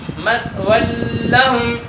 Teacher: دیکھیں کہ نون تنوین کے بعد لام آیا ہے. ہم ادھر ادغام بلا غنہ کر کے پڑھیں گے. اگر غنے کے ساتھ پڑھیں گے تو یہ غلط پڑھا جائے گا.